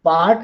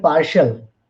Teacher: part, the final sound is t, but in partial it is sh. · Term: t becomes sh